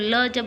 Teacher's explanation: ये जो ल बोलते हैं तो दांत को टच करता है